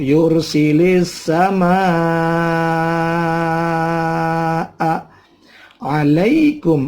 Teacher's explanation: setelah mad tabi'i ada hamzah dalam satu kalimat. Namanya mad wajib. Panjangnya 6 ketuk.